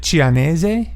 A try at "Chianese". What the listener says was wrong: No, it's definitely a hard k at the beginning. Chianese, I think that's what it is.